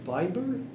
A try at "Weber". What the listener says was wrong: Weber. W-E-B-E-R. W-E-B-E-R. Weber, yeah. But it's pronounced with a V. Weber.